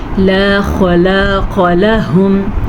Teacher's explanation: خا کو پر پڑھنا ہے، الف مدہ کو کھینچ کے پڑھنا ہے، اور قاف کو بھی پر پڑھنا ہے کیونکہ خا قاف دونوں حروف مستعلیہ میں سے ہیں.